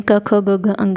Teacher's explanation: तो आप बताएंगे कंठ यह गले से बोला जाता है